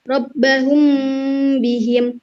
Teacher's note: bibir atas Hai cara membaca hukum bacaan ikhfa syafawi yaitu dengan menyamarkan suara mim mati yang ditahan selama dua harokat dua ketukan atau satu Alif disertai dengan dengung yang samar-samar